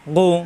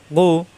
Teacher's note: মোটা হরফ, কণ্ঠনালীর শেষাংশ থেকে গৌ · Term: গয়েন